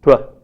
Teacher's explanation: tw, which is a labialized, voiceless, alveolar plosive